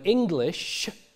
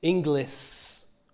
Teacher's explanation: So the word English becomes Inglis with a S.